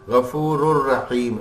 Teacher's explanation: اب دیکھیں مل تو رہا ہے لیکن نون کی نہ آواز آ رہی ہے نہ غننے کی آواز آ رہی ہے. غفور یوں کر کے نہیں ہے, غفور الرحیم.